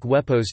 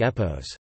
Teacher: the Proto-Indo-European and Proto-Greek semi-vowel w (digamma) was retained at the beginning of a word.